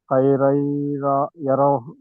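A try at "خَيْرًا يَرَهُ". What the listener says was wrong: సరిగా ఇది చేయలేదు గున్నా చేయలేదు రెండు హర్కాత్తులు గున్నా చేయాలి.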